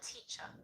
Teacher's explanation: But in other examples, such as the word teacher, has an R on the end of it, but there's no vowel sound after the R. So we don't actually enunciate the R sound itself. So for example, in American English, sometimes you'll hear something more like teacher. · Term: non-rhotic